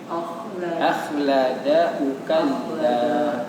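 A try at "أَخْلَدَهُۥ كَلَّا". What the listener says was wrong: Nah, ketika dia nyambung, hunya panjang. Iya, ketika nyambung. Ada wawunya. Itu tanda panjang. Ketika nyambung, ketika dia berhenti itu nggak dibaca.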